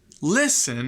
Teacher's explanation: listen has a first syllable stress right